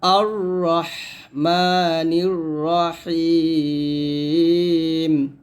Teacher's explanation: হাটা হলকের মাঝখান থেকে চিকন করে নিয়ে আসতে হবে।